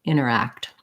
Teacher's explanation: act is a black cat vowel like a um and also interact has last syllable stress so quick on the enter or inner and longer on the act